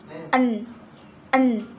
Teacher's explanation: n bagian oral diblokir dengan menekan ujung lidah ke alveolar Ridge jadi lidah diletakkan dengan menekan pada alveolar Ridge